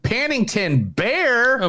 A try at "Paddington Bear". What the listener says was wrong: You were saying Paddington Beer.